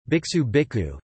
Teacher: A sibilant assimilates to a preceding k as an aspirate